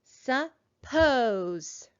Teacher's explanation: when i say that word i hear the second syllable is higher louder and longer than the first syllable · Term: accent